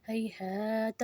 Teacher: 2 چشمی والا ہا ہے تو اس کو ہم نرمی سے ادا کریں گے، حلق سے زبان کے پیچھے زور نہیں دینا